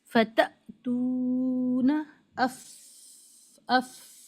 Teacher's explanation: ایک ایئر فلو کے ساتھ اف تھوڑا لانگ کر کے بتا رہے ہیں آپ کو